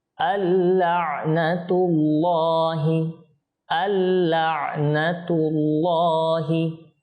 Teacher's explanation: নুন সাকিনের পর লাম এসেছে সেজন্য এখানে ইদগাম তো হবে ইদগাম মানে মিলিয়ে পড়া